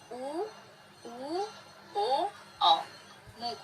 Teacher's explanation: इनको उच्चारित करने में ओठ की आकृति गोल हो जाती है। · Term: वृत्तमुखी स्वर